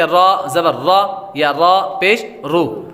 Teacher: रा पर ज़बर या पेश होगी तो रा को पुर पढ़ेंगे